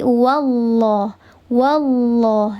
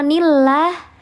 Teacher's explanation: Diangkat pangkal lidah atau lidah bagian belakang itu diangkat, dikeraskan sehingga menghasilkan bunyi yang tafhim atau bunyi yang tebal.